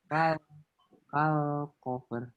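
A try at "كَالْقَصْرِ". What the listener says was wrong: Ini qaf kemudian shot ya. Kal qasr. Bukan kal cover ya. Kalau cover dari fa sini. Ini shot. Kal qasr. Kal qasri.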